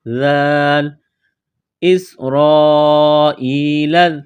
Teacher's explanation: ذال کو پڑھتے وقت زبان تھوڑی سی باہر نکالیں گے